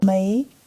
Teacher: Hear that rising tone on may? [music] That's what makes it a question.